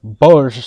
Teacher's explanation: the Mongolian L is kind of like the soft J sound and an L sound combined so the word bullish sounds almost like the English word bulge